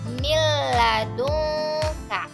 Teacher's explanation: nun mati bertemu dengan lam maka cara membacanya tidak dengung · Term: idgham bila guna, idgham bila gunnah